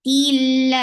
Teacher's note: For kasra, give E sound attached with lafz jalala, and lafz jalala will be light because there is kasra before it. Tilla. 4 counts long, and give raqawa on ha when you will stop at the end of ha, and give sakun.